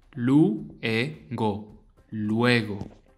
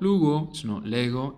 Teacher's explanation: pronounce each vowel separately. They don't merge.